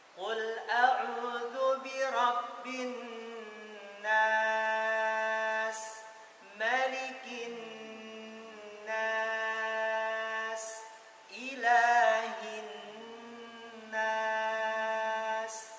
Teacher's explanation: nun tasydidnya disempurnakan, bin nas, sama aja semua takarannya